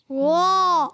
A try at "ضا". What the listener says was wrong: ہونٹ گول نہیں کرنے، گڈ۔ ضا ضا، اوپر اٹھا کے زبان کو اوپر دانتوں سے لگائیں۔ ضا زبر ضا۔